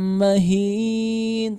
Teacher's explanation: idgham bi gunnahnya tahan dulu, jangan tergesa-gesa ya.